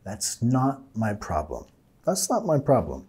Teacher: No tenemos que decir not to, más not. Deja tu lengua arriba.